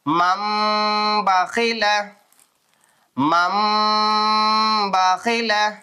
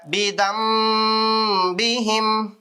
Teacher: பாச்சுன்னு சொன்னா அதை நூனே சாக்கின் தன்வீனை மீமா உச்சரிக்கணும் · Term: எக்லாப்